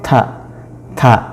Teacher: Kalau ta itu termasuk huruf, kalau dalam makhrajul huruf ya, adalah huruf hams. Jadi seakan-akan itu ada udara sedikit keluar